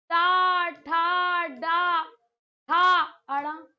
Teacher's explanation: इन सभी का उच्चारण स्थान सदैव मूर्धा रहता है